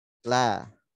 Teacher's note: ketika dikeluarkan berharokat fathah, maka tipis, tarik, buka ya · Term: lam